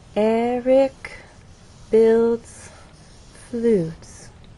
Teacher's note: there is still a change of pitch because there is word stress, but the overall pattern is falling intonation. So as not to confuse you with all of this up and down, I'm simply going to draw that straight line and then show how our voice falls at the end of the statement on flutes. · Eric stress is on the first syllable builds is one syllable and flutes receives our main stress Eric